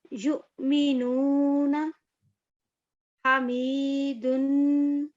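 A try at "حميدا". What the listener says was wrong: ہا گلے سے نکالیے گا. ہا حمیدن، ہا گلے سے نکالیے.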